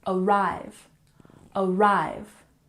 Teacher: arrive has emphasis on the second syllable